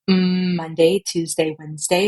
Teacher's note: forward resonance, which >> is not great for transitioning your voice, but it gives you like this sultry sound.